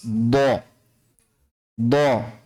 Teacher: Dha makhrajnya di salah satu tepi lidah atau kedua-duanya pada posisi gigi geraham atas. Dha. Salah satu tepi lidah kanan atau kiri atau kedua-duanya.